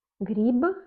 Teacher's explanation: une consonne qui est sonore à la fin mais elle devient sourde